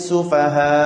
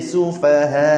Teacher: Yang terakhir tu tekan, jelaskan hamzah betul-betul. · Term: nabar